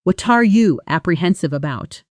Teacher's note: what are often blends into something closer to watcher or a very fast would-da, and you softens too.